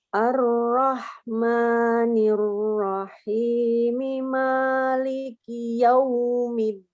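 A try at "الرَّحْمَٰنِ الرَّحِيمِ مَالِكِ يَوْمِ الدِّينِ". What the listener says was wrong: Yang walaupun ini yang rok tafkhim ar-rahma sama rok tafkhim ar-rahim suaranya terdengarnya berbeda. Harusnya sama ya. Nanti disamakan.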